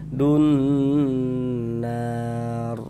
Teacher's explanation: Nar dibaca panjang. Ini namanya adalah mad arid li sukun. Namun pada awalnya dia namanya mad tabi'i. · kita gunnahkan dun, kita tahan, kita panjang sepanjang 2 harokat. Dun nar, begitu. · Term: gunnah musyaddadah